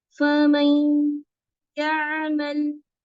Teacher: ये दो गुन्ने जो इदगाम वाले हैं वो ज्यादा लंबे होने चाहिए